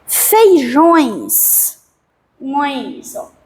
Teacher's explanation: O ditongo nasal, o ar sai pela boca e pelo nariz, né? Feijões, ões, é nasal, porque sai pelo nariz e pela boca.